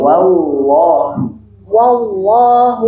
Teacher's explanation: wall langsung lamnya tebal